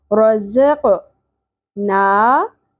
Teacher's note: नून के ऊपर खड़ी ज़बर है, एक अलिफ के बराबर खींचेंगे